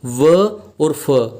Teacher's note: जिसमें दांतों का और ओष्ठ का सहारा लेना पड़े, उसे बोलते हैं दंतोष्ठ्य।